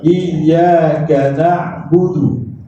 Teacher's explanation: Kerana huruf ya tu dari segi sifatnya dia rakhawah. Rakhawah ni suara terlepas.